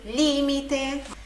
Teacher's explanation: A sílaba tônica no li